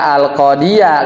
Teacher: Jadi dia hanya tinggal buka mulut ya dari kasrah ya ke fathah.